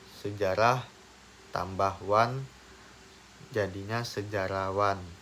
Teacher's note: hilangnya bunyi H pada proses pengimbuhan dengan akhiran wan pada kata sejarah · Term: pelepasan fonem